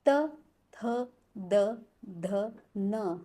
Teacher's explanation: हमारी जीभ दांत को टच कर रही है, इसलिए इसका उच्चारण स्थान हो गया है दंत्य।